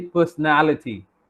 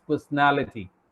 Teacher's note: NA part is having stress